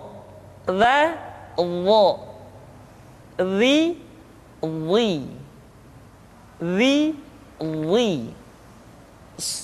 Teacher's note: Diucapkan dengan menyentuhkan ujung lidah dengan dua gigi seri bagian atas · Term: huruf dha